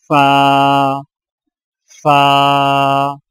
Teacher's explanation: فا کی ادائیگی میں سامنے والے اوپر کے دو دانتوں کے سروں کو نچلے ہونٹ کے گیلے حصے پر لگا کر باریک آواز میں پڑھیں